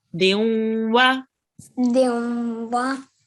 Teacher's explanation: when you join on the din to the wa, make sure there is a nasal sound